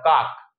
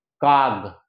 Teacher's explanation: কাজেই কটা যদি গ হয়, তাহলে আমরা জানি যে ক হচ্ছে অঘোষ ব্যঞ্জন, ক হচ্ছে অঘোষ ব্যঞ্জন, আর গ হচ্ছে ঘোষ ব্যঞ্জন। গ হচ্ছে ঘোষ ব্যঞ্জন, ক হচ্ছে অঘোষ ব্যঞ্জন এবং গ হচ্ছে ঘোষ ব্যঞ্জন। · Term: ঘোষী ভবন